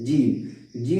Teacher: जीम अदा होता है जबान का बीच और ऊपर के तालु में सटने से